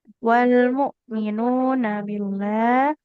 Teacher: Yang panjang nunnya yang domah bukan yang fathah Ibu.